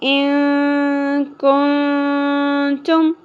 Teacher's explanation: نون کے اوپر ہم اخفا مع الغنہ کریں گے، یعنی ناک میں آواز کو کھینچیں گے